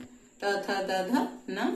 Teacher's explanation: न दंत है, त थ द ध न दंत है और साथ ही नासिक के वर्ण भी है